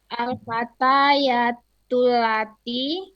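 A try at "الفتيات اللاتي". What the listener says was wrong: Lanya panjangin. Allati kan panjang. Al-fatayatul lati gitu.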